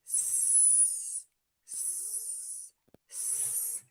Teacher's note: looks like you can see my lips are slightly pulled back the tip of my tongue is actually pointed slightly down but the back of my tongue is pulled up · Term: S sound